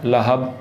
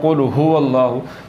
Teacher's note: حلق کے نیچے والے حصے سے جو ہا نکلتی ہے اس کے ساتھ پڑھنا ہے